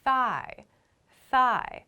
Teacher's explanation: my mouth is already moving to the next vowel sound as I'm making my TH sound. So they're very closely connected.